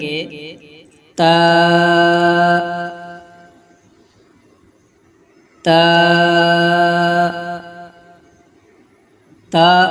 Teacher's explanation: ادا کرتے وقت زبان کی نوک ثنایا علیہ کی جڑ سے لگے تو تا ادا ہوتا ہے